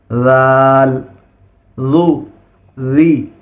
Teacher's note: زبان کا نوک، زبان کا نوک، اور اوپر کے جو دانت ہے اس کا کنارہ